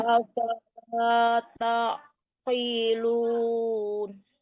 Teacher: qaf besar itu tetap tebal ya, walaupun kasrah ya, tetap bacanya tebal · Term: qaf tebal